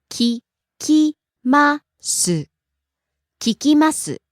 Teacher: rising on the second syllable falling on the last syllable